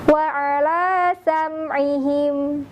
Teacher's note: Huruf mimnya pun tidak dibaca mendengung, tidak dibaca memantul